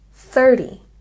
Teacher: You can hear that there's a soft T sound and stress on the first syllable.